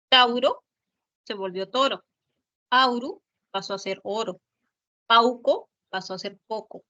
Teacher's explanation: También existe la monoptongación. Que es cuando un diptongo se reduce a una sola vocal. · Se convirtió en una sola vocal en el español. Entonces, hubo monoptongación de AU, que pasó a ser O.